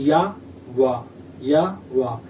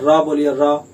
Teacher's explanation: या और वा, ना तो कहीं टच हो रहा है जीभ और ना कोई संघर्ष हो रहा है। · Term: संघर्षहीन